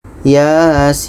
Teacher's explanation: Ya ini dibaca 2 harkat, sin ini dibaca 6 harkat karena sin ini termasuk dalam huruf 8 nih, sin.